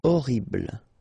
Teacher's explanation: remember we don't pronounce H here